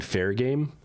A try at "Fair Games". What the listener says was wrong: It's Fair Games. You have to pronounce the S. That's how they spell the game.